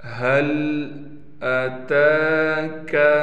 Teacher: فعال لما یرید۔ هل اتاک، تا پر کڑا زبر ہونے کی وجہ سے تا کو کھینچ رہے ہیں